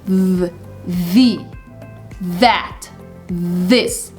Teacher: But if you add the sound so a little bit of vibration is happening in between your tongue and your teeth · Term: voiced